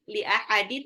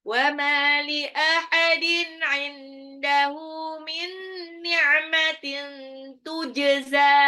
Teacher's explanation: Wa ma li ahadin, mimnya 2 harokat, wa ma matabai, li ahadin tanwin ketemu ain itu izhar